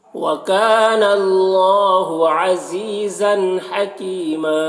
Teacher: ज़न, तनवीन में इज़हार हो रहा है, इसे जल्द पढ़ना है।